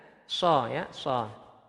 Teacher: ada suara hamas atau suara agak bersiul. Sha, tapi bukan bibirnya monyong.